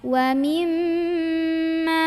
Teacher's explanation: Ketemu sama mim bertasydid, jangan lupa dengung dulu ya, tahan dulu karena mim punya sifat dengung ya. Wa mimma, ada sengaunya.